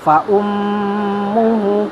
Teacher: Fa ummuhu mim musyaddadah 2,5 sampai 3 harokat ditahan. Fa ummuhu, hu-nya adalah mat badal, bisa kita sebut mat badal karena panjangnya 2 harokat.